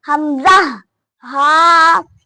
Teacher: اقصی حلق، حلق کا وہ حصہ جو سینے کی طرف ہے، اس سے حمزہ اور ہاء نکلتے ہیں